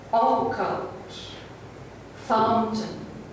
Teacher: For example, while the overall pattern is the same in the first and the second lines, we hear the beginning of the second line quite differently, because the first syllable is long through stress, occult, fountain.